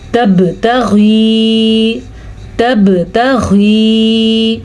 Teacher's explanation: با کے اوپر ساکن ہونے کی وجہ سے با پہ کلکلا ہو رہا ہے، ٹھیک ہے۔ قاف، طا، با، جیم، دال، یہ 5 وہ حروف ہیں جو ساکن آنے کی وجہ سے کلکلا ہو جاتا ہے، ٹھیک ہے۔